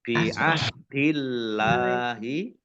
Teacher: Allahnya dibaca tipis karena harakat di depannya